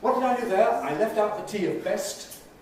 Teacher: What did I do there? I left out the t of best. We call this ‘elision’. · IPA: ɑː ˈbes ˋ_stjuːd_n̩ts